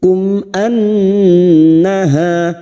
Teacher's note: mim sukun bertemu Hamza Idhar syafawi mim sukun dibaca jelas tanpa mendengung